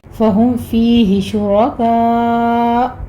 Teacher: حمزہ کو ساکن کرنے کے سبب اس پر جھٹکے کے ساتھ ہم وقف کریں گے